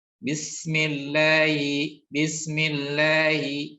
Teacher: maka huruf H-nya tidak terdengar dengan jelas ya. Terdengarnya samar ya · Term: khofa